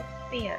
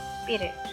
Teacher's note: एस पहले हो और उसके बाद अगर पी का वर्ड आ रहा हो तो फिर हम पी को एस्पायरेटेड नहीं करेंगे, उसके साथ पफ ऑफ एयर यूज़ नहीं करेंगे। पफ ऑफ एयर तब यूज़ करेंगे जब वो स्टार्ट में आ रहा हो और उसके ऊपर स्ट्रेस हो। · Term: unaspirated